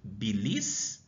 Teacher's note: A sílaba aqui tônica é o bi. Dessa maneira, se ela está na penúltima sílaba, então ela é uma paroxítona.